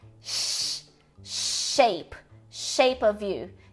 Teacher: palato alveolar que envolve o céu da boca e os alvéolos ao mesmo tempo mas simplificando a gente tem o som de sh Shape Shape